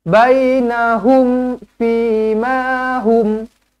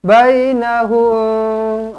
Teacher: hum ni mim mati izhar syafawi, didengungkan dengan dimatikan dengan jelas dan terang. Dimatikan dengan jelas dan terang.